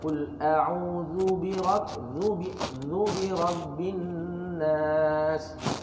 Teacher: Nun sabdu hukum dia wajibul gunnah mesti dengung keluarkan. Tapi tak menjadi kesalahan kalau tak dengung.